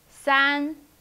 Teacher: Yes, it's high flat tone.